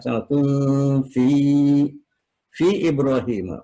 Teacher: Mad panjang, jaiz boleh, munfasil yang terpisah antara fi dan i, ya, fi Ibrahim itu dipisah, jadi namanya munfasil. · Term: mad jaiz munfasil